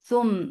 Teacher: Meme, you will get sifa of Gunna. This Gunna is Akmal, so keep the sound in your nose for a longer time. Thumma, for Fatha, the sound is short.